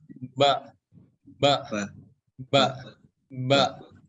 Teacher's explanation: Huruf ba itu dengan cara menempelkan kedua bibir kita ya. Kedua bibir ini ditempelin.